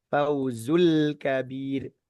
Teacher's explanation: Setelah lepas el kabir langsung nempel ke huruf kaf gitu. Setelah lepas dari huruf lam sukun, posisi lidah pada lam sukun kita lepas langsung ke huruf kaf.